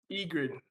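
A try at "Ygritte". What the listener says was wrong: No, not grid. Grit. You said Ingrid first, and then Egrid, and it's Egret.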